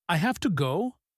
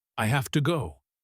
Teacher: Instead of going up like a question, it goes down like a statement.